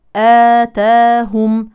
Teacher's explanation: هذا الالف يمد حركتين كاي الف بالمد الطبيعي